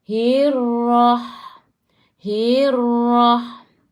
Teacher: Ra ni sifat hurufnya takrir. Kena ada getaran. Tapi janganlah terlalu kuat.